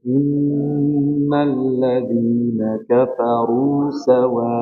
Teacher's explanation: Pertama, innal nunnya dipanjangin lama ini. Innalladzina kafaru sawa panjang.